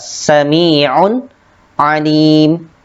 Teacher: Ain dibaca jelas. Di sini terdapat tanwin, kemudian bertemu dengan huruf ain, maka dibacanya yaitu jelas